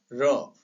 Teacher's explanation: जब हम र कहेंगे तो इसमें 2-3 बार कंपन होगा हमारी जीभ के अंतर्गत, तो इसको प्रकंपित व्यंजन कहा जाता है।